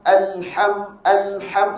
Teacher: matikan betul-betul matikan lam tu dulu baru masuk huruf ha